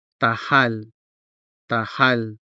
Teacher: The consonant ha is part of the stressed syllable, hal, and so it is clearly sounded